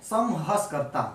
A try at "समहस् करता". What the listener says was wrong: हाँ, र मत बोला करो। करता। बस ऐसे बोले ना साफ साफ।